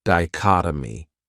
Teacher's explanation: This word has 4 syllables, and the stress is on that second syllable, dichotomy. That third syllable has that schwa, that sound, dichotomy.